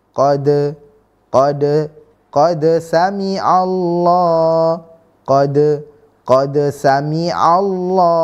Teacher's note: itu seperti kepala Ko yang kecil namun tanpa titik di atasnya maka dibaca muzhar Dibaca jelas yang mana lidah atau lisan itu dalam keadaan terhentak